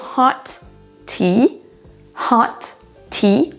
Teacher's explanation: On termine par un son T et on redémarre avec un T également.